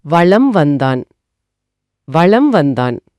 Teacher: அட, வளம் அப்படிங்கறதுல இருக்கிற இம்ம உச்சரிச்சு முடிக்கிறதுக்கு முன்னாடியே என் உதடுகள் வா அப்படிங்கிற எழுத்து உச்சரிக்க தயாராயிடுது. ஆமா, உதடுகள் முழுமையா ஒட்டுறதுக்கு முன்னாடியே அடுத்த சத்தத்துக்கு தாவி விடுகிறோம் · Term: மகர குறுக்கம்